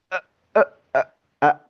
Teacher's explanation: Kalau hamzah itu cenderung ee ditenggorokan dalam dan sifatnya siddah.